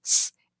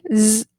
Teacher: the S being voiceless s and the Z Z being voiced